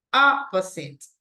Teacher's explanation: the stress goes in the first syllable